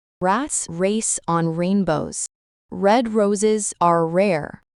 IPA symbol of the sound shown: ɹ